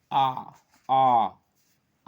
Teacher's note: विवृत स्वर, मुख पूर्ण रूप से खुला रहता, आ की ध्वनि, मुंह पूर्ण रूप से खुला रहता है